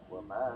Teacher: bacanya 2,5 alif sampai 3 alif atau 5 harokat sampai 6 harokat